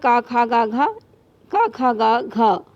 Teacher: ये हमारे कंठ से शुरू होते हैं वर्ण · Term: कंठव्य